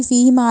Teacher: اس فا کو لمبا کیا، فیہما نہیں کہا، فی کہا، اور ہا کو لمبا نہیں کیا کیونکہ اس کے بعد کوئی یا مدہ نہیں ہے ، میم کو لمبا کیا کیونکہ الف مد آ گئی، فیہما